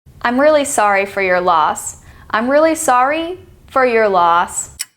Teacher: low high high low so it's a curve